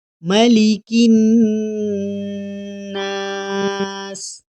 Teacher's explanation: اب اس آیت میں صرف نون پر غنہ کرنا ہے۔